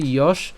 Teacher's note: আমরা এখানে তালব্যস পর্যন্ত উচ্চারণ করছি